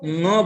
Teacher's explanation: इसलिए अंग नहीं बोला जाएगा, न बोला जाएगा। शुद्ध उच्चारण न है, अंग नहीं। ग उसमें नहीं आना चाहिए।